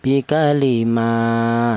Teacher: Di sini ada ma tadi ada huruf mim ini berharakat berdiri. Ini dibaca mad thobi'i. Panjangnya yaitu satu alif atau dua harakat atau dua ketukan.